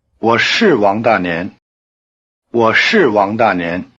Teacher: when it is emphasized as in yes, I am, 是 keeps its long R sound and the falling tone.